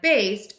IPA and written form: beɪst (Based)